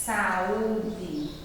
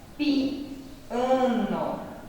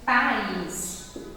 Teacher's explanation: É o encontro de 2 vogais, mas aí, ó, eles ficam em sílabas diferentes. Quando eu faço a minha divisão, ó, eles têm que ficar em sílabas diferentes, em sílabas separadas. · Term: hiato